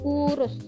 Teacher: Lalu kita ke U besar. Nah, U besar ini posisinya ini tinggi, bawah, belakang, dengan posisi mulut semi tertutup.